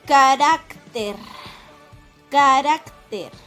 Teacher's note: Es una palabra grave porque está acentuada en la penúltima sílaba.